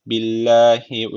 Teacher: Allah lafzı burada ince okunacak Çünkü öncesindeki harfin harekesi altta